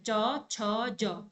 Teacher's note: जब हम च बोलते हैं तो च में क्या होता है? गले पे ज्यादा प्रेशर नहीं आता। हमारी गले से थोड़ा सा आगे प्रेशर बढ़ता है। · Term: तालव्य